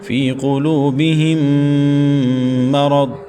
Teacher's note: میم ساکن کے بعد دوسری میم مشدد کا غنہ ہے تو یہاں غنہ کریں گے۔